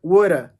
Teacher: omitir el último sonido de la V y nos quedaría woulda